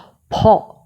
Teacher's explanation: দিয়ে বাহিরে বাতাস বের হয়ে আসবে যেমন আমরা ফ উচ্চারণ করছি দুইটা ঠোঁট দিয়ে ভেতর থেকে বাতাস বের করে নিয়ে আসছি এবং শেষে একটা ছোট্ট করে হ এর মতন উচ্চারণ হচ্ছে ফ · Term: অ্যাসপারেট সাউন্ড